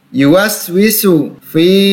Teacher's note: huruf fa berhadapan dengan ya sukun, mad tabi'i, dibaca 2 harokat.